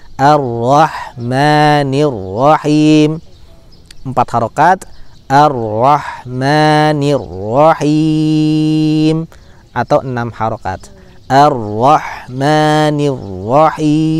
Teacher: mad arid lis sukun dalam riwayat Syatibiyah boleh dibaca 2, boleh dibaca 4, boleh dibaca 6 harokat